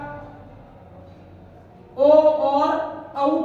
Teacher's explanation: कंठोष्ठ से होता है हमारा ओ और औ का उच्चारण